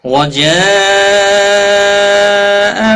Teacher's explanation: بڑی مد ہے، مد متصل 5 الف کے برابر کھینچ کر پڑھیں گے